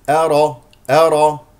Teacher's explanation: همزه مرققه را مفخمه لانها مفتوحه